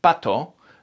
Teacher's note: In French and Spanish and Italian, for example, in Spanish, pato, there isn't that puff of air. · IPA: /p/